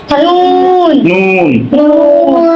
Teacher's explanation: জিহ্বার আগা তার বরাবর উপরের তালুর উপরে তালুর সঙ্গে লাগাইয়া